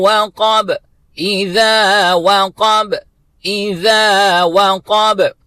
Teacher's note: آخری جو لفظ ہے وہ ہے وقب، واو کو باریکی کے ساتھ ادا کرنا ہے، قاف 2 نقطے والا، اس کو پر طریقے سے فل ماؤتھ اور با کے اوپر قلقلہ کرنا ہے